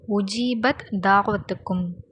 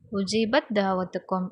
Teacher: உஜீபத் அப்படிங்கிறதுல முடிகிறத தா வருது, தாவத்துக்கும் அப்படிங்கிறதுல தால் ஆரம்பிக்குது. இதை இணைச்சி ஓதணும். அதாவது உஜீபத் தாவத்துக்கும் அப்படின்னு ரெண்டுத்தையும் இணைச்சி ஓதணும்.